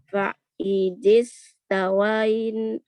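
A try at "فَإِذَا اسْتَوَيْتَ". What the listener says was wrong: Fa'idha bukan fa'idhi. Fa'idha stawaita.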